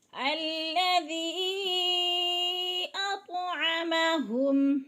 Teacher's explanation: یا کے اوپر مد منفصل ہے، 4 الفی مد ہے، یعنی 4 حرکات کے برابر کھینچ کر پڑھنا ہے۔ الَّذِي أَطْعَمَهُمْ، تو پر پڑھا جائے گا اور تو کے اوپر قلقلہ ہو رہا ہے، تو کو ہلا کر پڑھیں گے کیونکہ تو حروف قلقلہ میں سے ہے۔